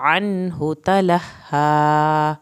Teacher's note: नून को ज़ाहिर किया क्योंकि आगे हा आ गया है